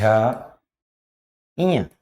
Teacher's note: नाक से ध्वनि निकलती हल्की सी